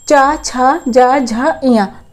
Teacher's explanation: तो जब आप चा बोलोगे तो आपका तालु इस्तेमाल होगा।